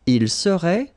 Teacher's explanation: Tu serais, final S not pronounced. Il serait, final T not pronounced.